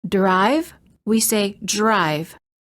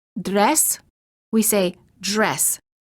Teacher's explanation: when the D is followed by an R the D changes and becomes an almost j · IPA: /dʒ/